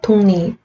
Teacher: 기역은 이응으로 변하고 리을, 니은으로 변해서 독립. 이렇게 발음 난다라는 거죠. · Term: 비음화